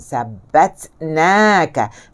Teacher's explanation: Ta juga adalah huruf syiddah. Dia tidak meluncur.